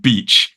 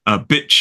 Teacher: beach has that long e vowel sound, and bitch has that short I vowel sound